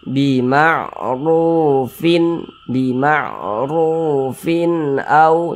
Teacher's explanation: dibaca jelas tidak berdengung kita baca jelas baca pendek saja · Jangan dibaca fin au, jangan dipanjangkan, pendek saja begitu. Bima'rufin au, pendek. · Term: izhar halqi